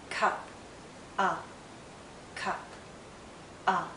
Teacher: it's a very short sound and also a very relaxed sound